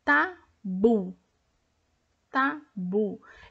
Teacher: Eu tenho a última sílaba tônica, confere.